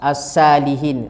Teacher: Ada yang sa sepatutnya tebal, dia baca nipis, maka jadi huruf sa. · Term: sad